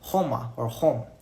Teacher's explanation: many Romani people don't even use the r sound at all